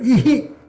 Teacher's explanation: Visarga is an aspiration, right? You pronounce it out. Uhu, banuhu. So you continue the same swara sound.